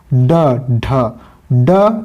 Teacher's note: जिनके उच्चारण में जिह्वा की नोक झटके से नीचे गिरती है तो वह उत्क्षिप्त फेंका हुआ ध्वनि कहलाती है।